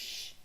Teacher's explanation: esse CH vai formar um único som, um som chiado de sh